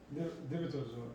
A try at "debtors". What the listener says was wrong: Yeah, D-E-B-T-O-R-S. You don't pronounce the B. You just read debtors.